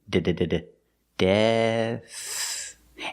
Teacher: we start with a D with the tongue back behind the teeth d d de and we finish with a soft th sound